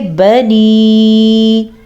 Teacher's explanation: اس مد کی مقدار ہے 2.5 سے 3 حرکات عربیہ